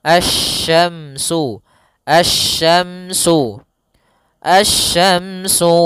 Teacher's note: langsung ke huruf shin, makhrajnya dari tengah lidah kita.